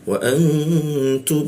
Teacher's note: Ini berwarna pink artinya ditahan di e mimnya di tasdidnya dua ketukan